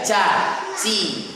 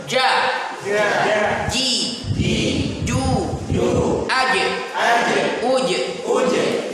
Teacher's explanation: Namun dalam bahasa Arab dia jangan sampai digesekkan. Kalaupun gesek, kalaupun ketemu boleh saja, tapi tidak ada efek hamsnya. Karena kalau kena rentan ada gesekan, ada desis dia. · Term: jim